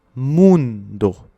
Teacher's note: mundo finit par un O, donc on l'accentue sur le U